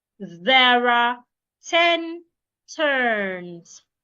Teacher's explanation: your tongue must be outside because of the th